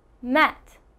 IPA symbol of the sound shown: ɛ